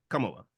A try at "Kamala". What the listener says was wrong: What I'm saying is the emphasis on the first syllable, not the second. You're saying Kamala, like your wrestler Kamala that young guy didn't.